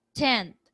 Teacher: so the vowel is nasalized so represented by the till diacritic above the B the vowel